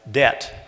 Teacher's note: We don't say the B in debt. We just say the T, the second consonant. The first one is lost.